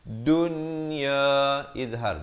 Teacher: Nun mati bertemu ya, di sini jangan dibacakan dengan idgham bi gunnah. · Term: izhar mutlak